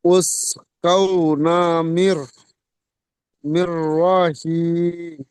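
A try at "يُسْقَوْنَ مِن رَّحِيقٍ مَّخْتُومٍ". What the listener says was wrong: কিম মাকতুম ইসকাউনা মির রহিকিম মাকতুম বলেন। উস নয়, ইউস ইউসকাউনা মির রহিকিম।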